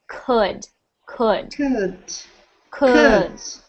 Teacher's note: instead of it sounding like could like an ooh sound I want it to sound like an uh